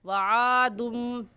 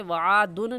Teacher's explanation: تو ایسے ہوگا وعادم، دال کو میم کے ساتھ ملا کر پڑھیں گے، وعادن نہیں کہیں گے. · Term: اقلاب